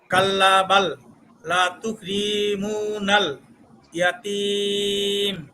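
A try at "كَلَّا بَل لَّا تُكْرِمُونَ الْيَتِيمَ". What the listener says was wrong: এবার মনে হয় প্রথম কাল্লাতে একটু টান কম হয়ে গেছে।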